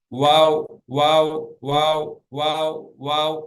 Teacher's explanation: உதடுகள் ஒட்டாம ஆனா உதட்டுல இருந்து தான் வருது